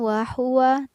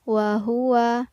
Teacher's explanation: wa huwa menggunakan ha tebal, bukan ha tipis